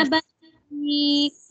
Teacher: شدت کے ساتھ آواز بند ہوئی اور پھر آخر میں تھوڑی سی ہمس آئی. ابویک ٹھیک ہے، پہلے آواز بند ہوئی، کاف کے اوپر ہم پہنچے تو ہماری آواز شدت کے ساتھ ایک دم بند ہو گئی، اس کے بعد آخر میں ہلکی سی ہمس نکلی، ابویک.